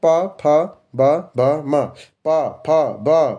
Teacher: ओष्ठ मतलब ओठ से निकलता है